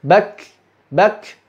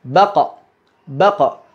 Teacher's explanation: Kalau kaf punyanya hams, kalau qaf punyanya qalqalah. Walaupun prosesnya sama, sama-sama langsung dilepas dari makhraj kita.